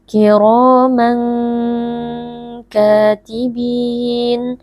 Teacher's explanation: tanwin yang bertemu dengan huruf Kaf ini merupakan bacaan Ikhfa Hakiki cara membacanya tanwin dibaca dengan samar lalu didengungkan sebentar